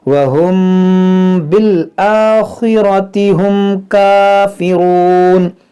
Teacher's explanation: دیکھیں یہاں پر میم ساکن کے بعد با ہے، حروف ہے، یہاں پر دیکھیں میم ساکن کے بعد با ہے تو یہاں پر اخفاء شفوی کا قاعدہ لگے گا، یعنی یہاں پر بھی غنہ کریں گے